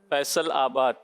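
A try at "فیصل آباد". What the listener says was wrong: आपने जो पढ़ा फैसल आबाद ये गलत होगा उर्दू में लाम के बाद अलिफ अलग से नहीं आएगा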